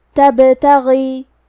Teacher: قلقلہ کا معنی ہے حرف ساکن کو ہلانا تو ہم حرف البا کو ہلاتے ہوئے یہ کلمہ کو پڑھیں گے